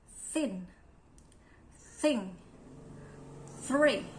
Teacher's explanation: They are dental sounds. The initial sound of thin, thing, and three are voiceless dental sounds.